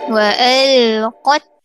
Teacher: Perhatikan juga pada huruf qaf. Pastikan sebutan qaf itu tebal dan sebutannya pastikan kita tajamkan dengan vokal O · semua huruf tebal baris atas kita kena kemaskan dengan vokal O supaya tak jadi ke arah vokal A